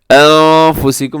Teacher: نون ساکن کے بعد فا ہے تو یہاں اخفا کیجیے گا